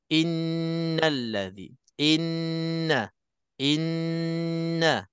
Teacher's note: hukumnya dengung mesti nak kena Cukup dua harakat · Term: wajibul ghunnah